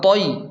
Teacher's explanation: تو کو موٹا پڑھیں اور یا لین بھی ہے تو اسے نرمی اور جلدی کے ساتھ پڑھیں۔ یا لین کو جلدی اور نرمی کے ساتھ پڑھیں اور تو کو موٹا یعنی پر پڑھیں۔